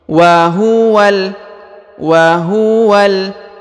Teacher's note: huruf wa langsung ke huruf lam yang berharakat sukun